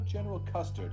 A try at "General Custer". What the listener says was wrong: did you say Custard? There's no D. It's just General Custer.